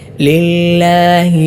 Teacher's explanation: ലില്ലാഹി എന്ന പദത്തിൽ ലാമിന് മുമ്പ് കസർ ആയതുകൊണ്ട് അഥവാ നേരിയതായ രൂപത്തിലാണ് ഉച്ചരിക്കേണ്ടത്